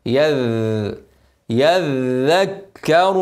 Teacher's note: الذال مشدده لازم ابين الرخاوه اوعى تقول يذكر غلط كده غيرت حرف يذ يذ يذ يذكر